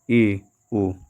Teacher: जिन स्वरों के उच्चारण में मुख द्वार आधा बंद रहता है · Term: अर्ध समृत